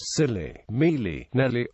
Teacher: unlike modern Southern and general u s speeches dark l sound older Southern pronunciation has a clear l sound whenever L appeared between front vowels